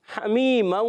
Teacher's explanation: ہا کا مخرج حلق کا درمیان والا حصہ ہے. حمی، یا مدہ یا سنگ سے پہلے زیر آ رہی ہے تو یا مدہ ایک الف کھینچ کر ادا کریں گے.